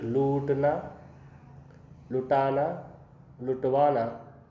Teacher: जो दीर्घ स्वर है वह ह्रस्व हो जाता है। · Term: दीर्घ का ह्रस्व